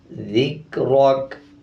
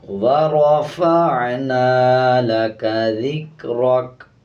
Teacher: کاف کے اوپر جب وقف کریں گے تو کاف کی آواز کو آدھا پڑھیں گے اور زبر کو سائلنٹ کریں گے۔